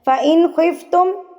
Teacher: فَإِن خفتم, خا آ گیا نا حروف ہلکی میں سے, فَإِن ان پڑھیں گے, نون کو ظاہر کریں گے, نون کی آواز کو کہیں بھی ادھر آگے پیچھے نہیں کرنا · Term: اظہار